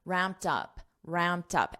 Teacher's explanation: when you say it with the preposition up you're not going to hear that t too much